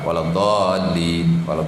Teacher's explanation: Kalimi musaqqal yang mesti dibaca 6 harakat. Tapi kalau baca pendek pun waladdallin sah.